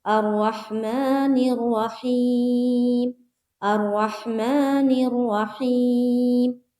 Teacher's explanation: الرحمن میں میم کے اوپر جو کھڑا زبر ہے وہاں پر ہمیں اسٹریچ کرنا ہے، کھینچنا ہے ایک الف کی مقدار، اور ہی میں یا مدہ ہے وہاں پر بھی کھینچنا ہے۔